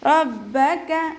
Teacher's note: Back ശബ്ദം വന്നിട്ടുണ്ട്, അപ്പോൾ 2 ഹർഫുകൾ ഉച്ചരിക്കുന്ന കനം കൊടുക്കുക.